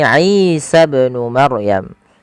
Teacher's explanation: Di sini Isa ibn Maryam. Isa panjang i-nya dipanjangkan 2 harakat karena ia mad tabi'i